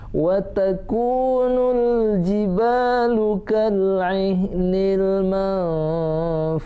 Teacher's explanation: Itu ikhfa ya. Nun mati ketemu fa. Dengung, samar-samar dengung.